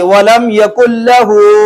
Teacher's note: اگلا لفظ دیکھنا، اگلا لفظ ہے لام، لام یرملون میں سے ہم نے پڑھا ہوا ہے کہ لام اور را آ جائے تو ادغام تو ہوگا لیکن غنہ ادغام بغیر الغنہ ہوگا، تو وَلَمْ يَكُنْ لَهُ، جی ہاں کے اوپر الٹی پیش، الٹی پیش کو ایک الف کے برابر لمبا کریں گے